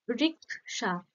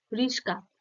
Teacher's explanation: হুম, এটা ক আগে ছিল তালব্য শ পরে ছিল, আর এটা তালব্য শ আগে থাকছে ক পরে থাকছে। একই রকম ব্যঞ্জনধ্বনি থাকছে, শুধুমাত্র তাদের স্থানটা বদলে যাচ্ছে। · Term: বিপর্যয়